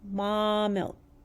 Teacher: you can hear that long vowel holding a little extra longer than a normal short vowel sound